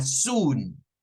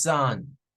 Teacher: Soon es U, es una U larga.